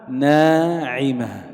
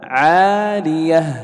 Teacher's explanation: الألف هنا سبقت بنون، النون حرف مستفل مرقق، فحكم الألف أن ترقق